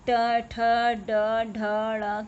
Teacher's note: ये मूर्धन्य से निकलता है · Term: ट वर्ग